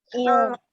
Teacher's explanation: Mula sebut lam, lepas tu rapat bibir untuk huruf mim